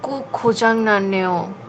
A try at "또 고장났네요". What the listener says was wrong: কোক না, তো তো খোঁজাং না নেও, অর্থাৎ রেস্টরুমের যে এয়ার কন্ডিশন সেটাও নষ্ট হয়ে গেছে।